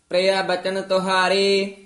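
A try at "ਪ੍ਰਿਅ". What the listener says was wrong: प्रिया एडे कन्ना नहीं लाउना, प्रिया बचन तुहारे।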